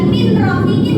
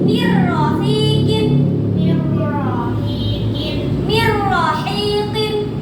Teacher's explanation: Cara membacanya non sukunnya dihilangkan, dimasukkan ke dalam ro. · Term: idgham bila guna